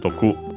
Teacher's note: By the way, accented on the last syllable on its own, doku.